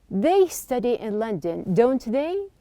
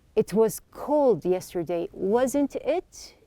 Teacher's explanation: I am raising my tone here at the very end, which is the tag question.